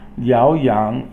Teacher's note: Yao is a second tone and yang is third tone